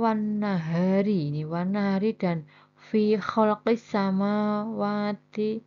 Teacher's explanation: Cara membacanya alif lam lebur ke dalam huruf nun dan sin. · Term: alif lam samsiah